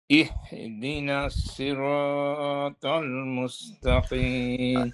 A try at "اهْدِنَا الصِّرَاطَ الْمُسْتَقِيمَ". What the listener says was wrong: এখানে একটা ভুল থেকে যায়, ইহদিনাস যদি পড়ি তাহলে পরে সদ অক্ষরটা সিন হয়ে যায়। নুন সিন জবর নাস, নুন সদ জবর নাস, নাস। নাস বললে এখানে সিন হয়ে যাবে, হ্যাঁ, এখানে সদ।